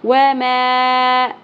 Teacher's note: वमा मद्दे मुनफ़सिल सबब मद्दा हमज़ा अगले कलिमा के स्टार्ट में आ गया हरफ मद्दा के बाद 3 अलिफ के बराबर खींचना है